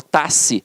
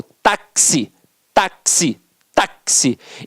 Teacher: Então, o X aqui, ó, ele tem um som de KS.